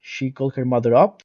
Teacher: she called her mother up with the adverb up stressed